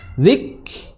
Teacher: Huruf kaf memiliki sifat hams, dikeluarkan nafasnya